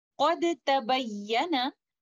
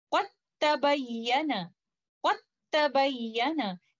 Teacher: we completely merge letter Dal into letter Ta. This idgham will be idgham kamil. We will directly go to letter Ta, and we will not recite letter Dal. · you will not hear any sound of letter Dal because letter Dal has completely merged into letter Ta, and that's why letter Ta has a shadda, which is an indication in Osmani script of idgham kamil.